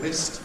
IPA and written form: mɪst (mist)